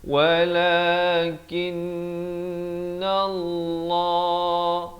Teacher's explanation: lafaz jalalah dibaca tebal 2 harakat